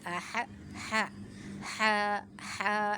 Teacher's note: ح کو وسط حلق سے ادا کریں گے، باریک پڑھیں گے